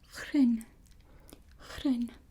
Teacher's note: You got the G sound and the R that you roll, and it becomes groen.